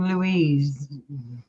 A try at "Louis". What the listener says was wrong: the S is silent